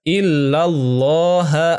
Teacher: lafaz Allahnya adalah tafkhim, yaitu tebal. Karena sebelum lafaz Allah ini berharokah fathah.